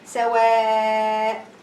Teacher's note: You need to elongate for 4 haraka.